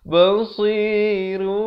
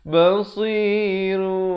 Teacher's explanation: kita menukar daripada bunyi nun kepada bunyi mim dengan kadar dua harakat. Bibir itu sekadar bersentuhan saja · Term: iqlab